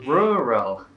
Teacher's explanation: they pronounce 2 R's in this word as L's, one at the start and one in the middle of the word